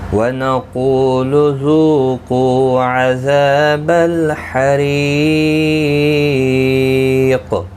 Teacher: روزیر کی وجہ سے باریک پڑھا جائے گا، اور یہاں وقف تام ہے، قاف ساکن پڑھا جائے گا، اس پر قلقلہ بھی ہوگا